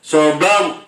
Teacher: ro sukun jatuh setelah harokat fathah, dibaca tafkhim tebal